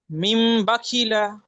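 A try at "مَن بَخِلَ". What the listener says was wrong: মিম নই, মিম মিম জাবার মাম, বাকিলা। প্রত্যেকটা পড়া প্রথমে বানান করবেন, প্রথমে বানান করবেন। মিম মিম জাবার মাম।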